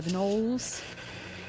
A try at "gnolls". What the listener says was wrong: It's just pronounced gnolls. The G is silent.